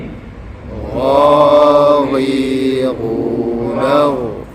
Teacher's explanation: Istillak ini dalam erti kata dia adalah tebal. Tebal ini dia pangkal lidah kita naik ke langit-langit. Maka dia akan berbunyi dengan gha gha belah dalam tu.